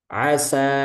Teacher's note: Contohnya asa, nah, huruf sin itu tipis. Setelahnya huruf alif. Nah, alifnya dia ikut tipis asa gitu ya.